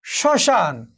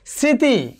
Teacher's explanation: অর্থাৎ ম ফলা যদি আমাদের আমাদের যে ধ্বনির যদি শুরুতেই থাকে, অর্থাৎ পদের আদ্য ব্যঞ্জন বর্ণে মফলা সংযুক্ত হলে সাধারণত এর কোনো উচ্চারণ হবে না, কিন্তু প্রমিত উচ্চারণে মফলাটি একটু সামান্য নাসিক্য প্রভাবিত হয়ে ওঠে। যেমন একটু ধরো শ্মশান, এখানে যে মফলা রয়েছে এই মফলার উচ্চারণটি এখানে হয়নি, বাট একটু নাসিক্য রয়েছে।